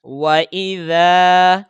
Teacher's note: یہ ذال کو کھینچ کر پڑھیں گے کیونکہ زبر کے ساتھ الف ہے